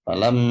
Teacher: Falamma mim tasydid wajib didengungkan.